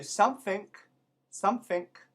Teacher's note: sometimes an ending g becomes like a k